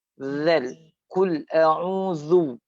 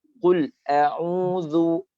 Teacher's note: Disebabkan zal ni baris depan, jadi kita just bulatkan sikit kita punya bibir atau muncungkan kan.